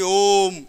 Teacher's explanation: ओ को हम 3 गुना अधिक खींचेंगे ह्रस्व स्वर से, यानी ओम, इस तरह से ओ को थोड़ा लंबा खींच के, ठीक है। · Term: प्लुत स्वर